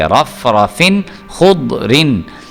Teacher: خا جو ہے یہ حروف حلقی میں سے ہے، اس کا مطلب یہاں پہ اظہار کریں گے، یعنی پہ غنہ نہیں کریں گے، ہم اس کو ایسے ہی پڑھیں گے، رف رفن خود رن۔